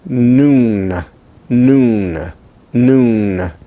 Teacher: It is alveolar, that is, now your tongue is on the alveolar ridge, as it is, for instance, for S, but it is now a stop there, like it would be for T, except that you open your nasal passage and you pronounce it as noon, noon, noon. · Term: nun